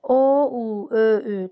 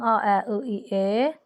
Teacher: O, u, ö, ü dodaqlanan, a, ə, ı, i, e, dodaqlanmayan saitlərdir.